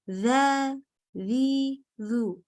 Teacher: Ini ada istifal, pangkal lidahnya turun, infitah lidah dengan langit-langit kebuka. Ini artinya maksudnya kalau istifal dan infitah bergabung, maka disebut dalam bahasa Indonesia disebut sebagai huruf yang tipis.